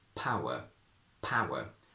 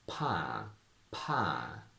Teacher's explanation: When we connect u to another vowel sound, we need to put a little intrusive w